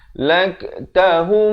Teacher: Laktahum, di sini idgham mislan saghir, dibacakan dengan dengung dua harakat.